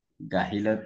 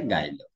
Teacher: গাহিল থেকে হয়েছে গাইল, অর্থাৎ ওই তোমার সে হটা লোপ হচ্ছে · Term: হ ধ্বনি লোপ